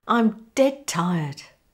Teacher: the D gets dropped in favour of the T.